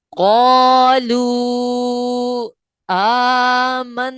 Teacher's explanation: واو مدہ, کیونکہ واو ساکن سے پہلے والے حرف کے اوپر پیش ہے, اور اس کے فوراً بعد حمزہ دوسرے کلمے میں آ گیا, لہٰذا یہ مد منفصل ہوا, مد منفصل کی مثال ہے, اور اس کی مقدار بھی اتنی ہی ہے, 2 اڑھائی الف یا 4 5 حرکات کے برابر.